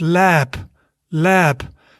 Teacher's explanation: if it's at the end of the word then it's actually more pronounced like a p at the end of a word